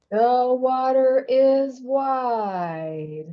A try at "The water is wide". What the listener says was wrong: Yeah, connect the dots. Don't break. So we got water is, and then we got a big old hit. The water is wide.